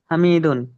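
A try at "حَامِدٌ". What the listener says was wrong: এই যে হায়ের পরে কি আছে, একটা খালি আলিফ আছে, তাহলে কি হবে? টান হবে।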